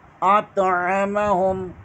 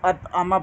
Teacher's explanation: اطعمہم، عین ادا کریں گے، اطعمہ نہیں پڑھیں گے، اطعمہم عین ادا کر کے پڑھیں گے، بعض لوگ اطعمہ پڑھتے ہیں، وہ غلط ہو جاتا ہے